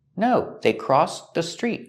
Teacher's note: Make a stop T, link it to the next word.